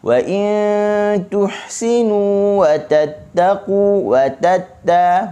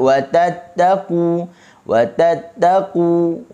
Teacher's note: Hujung lidah tu dia kena tahan digusi dengan kuatlah, pertemuan yang kuat. Okey, jangan letak di gigi.